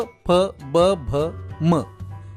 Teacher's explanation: प, फ, ब, भ, म या वर्णांचा उच्चार करताना खालचा ओठ आणि वरचा ओठ एकमेकांना मिळतात आणि हवा रोखून धरल्यानंतर अचानक सोडली जाते. म हे व्यंजन अनुनासिक देखील आहे कारण याचा उच्चार करताना ओठांसोबत नाकाचाही वापर होतो. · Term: ओष्ठ, ओष्ठ व्यंजनांची